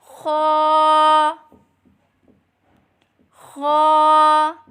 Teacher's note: حلق کے اوپر والے حصے سے ادا کریں